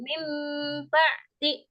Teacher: ada nun mati atau tanwin bertemu dengan ba, itu suaranya itu diganti mim. Suara nun mati atau tanwinnya tapi dengan berdengung ya Bu, dengan berdengung.